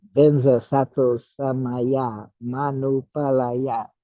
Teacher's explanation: they moved the M over to the Anupalaya, making it Manupalaya. Instead of Anu, it's Manu.